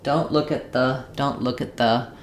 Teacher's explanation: I'm following my T with a consonant sound. So I'm going to have the stop or unreleased T.